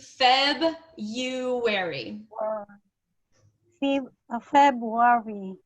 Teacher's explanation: Pretend that there is no R after the B.